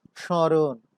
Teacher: যখন স্মরণ উচ্চারণ করছি তখন তার মধ্যে একটু অনুনাসিকতার সৃষ্টি হয়েছে, যার কারণে আমরা তালব্য শ এর উপরে চন্দ্রবিন্দু দিয়েছি নাসিক্যতার চিহ্ন হিসেবে।